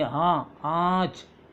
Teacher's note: नून साकिन जो साफ अदा ना हो बल्कि नाक में गुनगुनाकर अदा हो, इसे कहते हैं अक्सर ناک میں سے آواز نکلتی ہے لیکن پورا نون نہیں لکھا جاتا، اس کو کہتے ہیں غنہ۔ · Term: نون غنہ